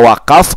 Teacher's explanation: huruf ro kita panjangkan karena huruf ro yang terakhir dari kata kuffara ada tanda panjang